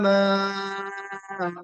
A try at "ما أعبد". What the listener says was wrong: ما کو اور کھینچنا ہے